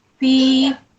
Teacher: mad asli ya dibaca panjang 2 harakat.